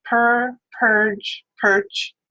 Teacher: you'll notice the vowel gets progressively shorter as we go on